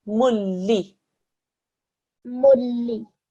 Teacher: Okay, so that would mean that this dhammatain, you treat it as if it's just a single dhamma, a meme with a dhamma. Okay, so you don't do any sort of nasal sound whatsoever. You do a meme with a dhamma and it joins to a la mushaddad. So that's why you would read it as mulli.